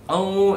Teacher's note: At least 2 harakat. Itu ain ada waw, maknanya ada mat asli.